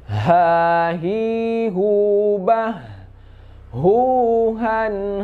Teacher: Yang kedua huruf H, ya. H ini sifatnya hamas. Dia itu keluar juga dari tenggorokan paling bawah.